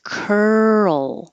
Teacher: You're going from the R to the L position. Curl. Hold it in the L position a little longer than you might think is necessary so we can hear the L sound.